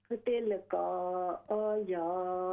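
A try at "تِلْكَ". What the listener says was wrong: तिल का काफ को लंबा न करें, तिल का आयतुल्लाहि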